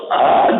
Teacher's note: तो अ जितने देर में उच्चरित होता है उसमें जो समय लगता है वो एक मात्रा माना गया। इसमें 2 मात्रा का समय लग रहा है, इसलिए दीर्घ है।